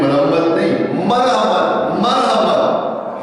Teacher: مولوی صاحب کہتے ہیں مرحمت نہیں، مرحمت، مرحمت، ہاں کے مخرج کو واضح کرتے ہوئے کہ ہاں کہاں سے نکلتا ہے، حلق سے نکلتا ہے